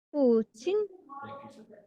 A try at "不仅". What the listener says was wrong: 不 仅 ▁third ▁tone， 不 仅 ，